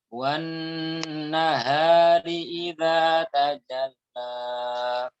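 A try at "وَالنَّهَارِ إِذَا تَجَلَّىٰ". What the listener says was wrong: Nah, koreksinya untuk huruf H di sini jangan terlalu dalam, Ustaz. Wan nahari tanpa terlalu dalam. Wan kurang. Atas lagi. Wan nahari idza tajalla.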